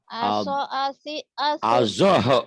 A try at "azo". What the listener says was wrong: Azo, bukan aso. Azo, Z, zo. Aso melulu. Bukan aso, azo. Z, H, O tuh zo gitu, azo, azi, azu. Nih lihat mulutnya.